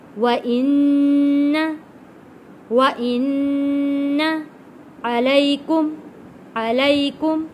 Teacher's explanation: نون کے اوپر تشدید ہے، غنہ ادا کیا ہے اور یہاں پہ یا ساکن ہے، یا ساکن سے پہلے زبر، حروف لین ہے۔